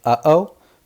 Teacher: like here and here that's called a glottal stop so like when you say uh-oh like the back of your throat closes a bit